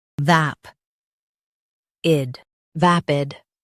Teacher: Stress vap and keep id quick.